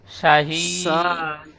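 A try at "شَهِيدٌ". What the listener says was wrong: শাহিদ শাহিদ শাহিদ লাম জবর লা জালিকা লা সা সা জবর সা জালিকা লা সা হা ইয়া দাল জের হিদ।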